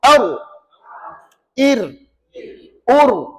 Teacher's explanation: nak sebut ra ni belakang hujung lidah ni kena lengkungkan kat atas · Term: inhiraf